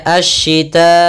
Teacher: Maka apabila ada mad tabi'i bertemu setelahnya huruf hamzah dan hamzah di satu kata, maka kita namakan dengan mad wajib muttasil, panjangnya 4 atau 5 harakat. Maka kita membacanya asyita'i, panjang dulu 4 harakat baru i.